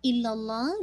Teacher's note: लामे जलाला को हैवी कीजिएगा